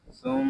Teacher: یہاں میم شدد ہے، اس کو ہم غننے کے ساتھ پڑھیں گے، اس کو سم ایسے نہیں پڑھیں گے، اس کو پڑھیں گے سم.